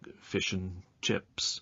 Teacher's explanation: the word and is often pronounced n in phrases like fish and chips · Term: weak pronunciation